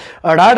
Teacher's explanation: ਫਟਕਵਾਂ, ਅੜਾੜਾ ਜਿਹੜਾ ਇਹ ਸਾਡਾ ਫਟਕਵਾਂ ਵਿਅੰਜਨ ਹੈ, ਕਿਉਂਕਿ ਇਸ ਦੇ ਉਦਾਹਰਨ ਵੇਲੇ ਜੀਭ ਤਾਲੂ ਨੂੰ ਛੂਹ ਕੇ ਝਟਕੇ ਨਾਲ ਹੇਠਾਂ ਆਉਂਦੀ ਹੈ